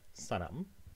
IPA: saɾam